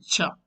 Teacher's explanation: Cha, post alveolar. Just behind the teeth ridge.